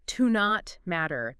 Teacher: It's pretty common, but in fast speech, it can get sort of squished together phonetically. Yeah, you might hear it almost like one word, like to not matter. The T in not kind of blends into the M.